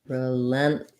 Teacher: So relentless has stress on the lent syllable. The RE is, rather than being relentless, we're going to have a reduced vowel here for the letter E.